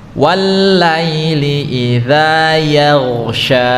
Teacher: huruf ya itu dibaca tipis, kemudian gha dibaca tebal karena isti'la